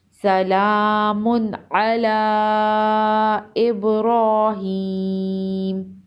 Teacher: دو پیش کی تنوین پر غنہ نہیں کریں گے، آگے حروف حلقی ہے اور مد کو 3 سے 4 الف کے برابر کھینچ کر پڑھیں گے